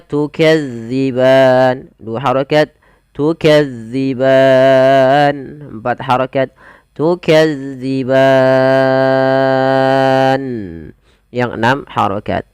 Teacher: Karena setelahnya ada huruf nun yang disukunkan karena waqaf, maka ia perlu kita panjangkan sepanjang 2, 4 atau 6 harokat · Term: mad arid lisukun